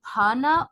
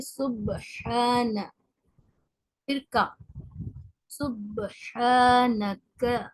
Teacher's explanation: با اور ہا کی آواز دونوں الگ ہونی چاہیے، مرج نہیں ہونی چاہیے. اگر آواز مرج ہو جاتی ہے با کی ہا کے ساتھ تو انسان سخت گنہگار ہو سکتا ہے، کیونکہ سبحانہ اور سبحانہ، بھانا اور حانا، یہ دو مختلف آوازیں ہیں، دو مختلف حروف ہیں.